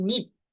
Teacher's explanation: পি যদি শব্দের শেষে বা থাকে তাহলে কিন্তু তখন আর অ্যাসপিরেটেড সাউন্ড হয় না, তখন নন অ্যাসপিরেটেড হয়।